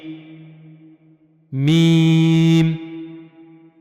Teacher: جیسا آپ تصویر میں دیکھ سکتے ہیں، یہ باہر والا حصہ ہے ہونٹوں کا، تو اوپر والے اور نیچے والے دونوں ہونٹوں کا جب باہر والا حصہ خشک والا آپس میں ملے گا تو وہاں سے ادا ہوگا میم